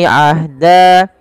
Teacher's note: nun mati bertemu dengan Dal samarkan nunnya kepada huruf Dal karena ia ada bacaan Ikhfa yang di mana suara nunnya samarkan